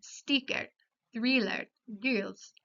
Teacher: Es una vocal alta con la lengua elevada en la cavidad bucal. los labios casi paralelos.